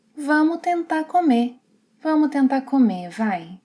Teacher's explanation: drops the final S and R sounds of the verbs, which is something common colloquially in some dialects.